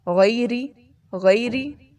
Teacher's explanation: سب سے پہلا لفظ غیری، غین موٹا پڑھا جاتا ہے اور یا کو نرمی سے ادا کرنا ہے، جیسے انگلش لفظ میں یا کہتے ہیں نا، وائی اے یا، اس طرح اس کو پڑھیں گے۔